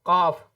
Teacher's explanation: फिर आगे देखिए, अब बड़ा काफ है जिसको कहते हैं काफ, जिसकी अदायगी हलक से होती है, यानी जिसको हिंदी में कहते हैं कंठ, उससे इसकी अदायगी की जाती है